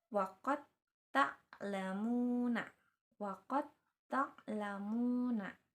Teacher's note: jadi huruf da-nya itu dileburkan atau seolah-olah tidak ada. Jadi dilanjutkan ke huruf selanjutnya.